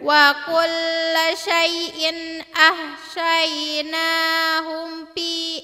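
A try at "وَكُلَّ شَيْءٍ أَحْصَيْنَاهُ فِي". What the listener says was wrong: Ahsaynahu fi bukan hum. Ulang lagi.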